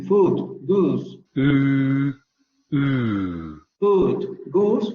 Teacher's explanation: en el inglés escocés se van a pronunciar con el fonema central cerrado labializado